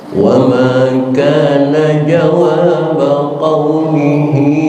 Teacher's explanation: Yang perlu diperhatikan dalam bacaan tadi di antaranya adalah wa ma kana jawab qaumihi, hak domir bertemu dengan hamzah di depannya dalam kalimat ila, maka madnya mad yang panjang silah tawilah, boleh sampai 6 harokat